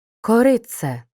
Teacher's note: перед свистячим вимовляємо як ц